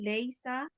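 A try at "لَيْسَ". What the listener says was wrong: आप लंबा कहते लैसा, सा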